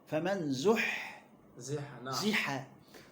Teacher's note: والحاء حرف مهموس، نعم. في همس.